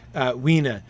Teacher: Weena. The terminal E's would be pronounced as a syllable, so it wouldn't actually be pronounced wine. It would be pronounced Weena, with stress on the first syllable, and the terminal E, a lesser syllable.